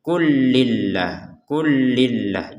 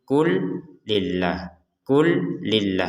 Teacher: sukun ini ya lam sukun ini ya bertemu dengan lam maka lam yang pertama dimasukkan kepada lam yang kedua sehingga langsung saja dibacanya klillah kullillah Jadi jangan sampai dibaca terpisah